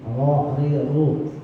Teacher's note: ini huruf ro ini makhrajnya pada lisan. Nah, lisan atau lidah ini agak bergetar sedikit. Ro, ri ru. Tapi jangan terlalu getarnya. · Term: huruf ra